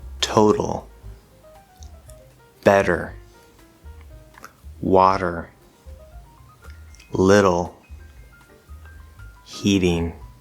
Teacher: if in addition to just being at the start of an unstressed syllable there is a vowel sound before it and a vowel sound after it just like with the d sound it will become a flapped sound · the d sound it will become a flapped sound so again just a flapped d written with a t